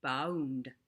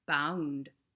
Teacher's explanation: By Shakespeare's time, the word bound is bound, where you can hear both the U and the O. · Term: really clear diphthongs